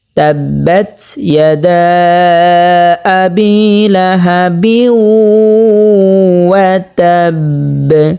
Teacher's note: এখানে ওয়াকফ হয়েছে, তা বাকে ধরবে এবং কলকলা হবে, বাটা সাকিন হয়ে যাবে, এখানে কলকলা করতে হবে।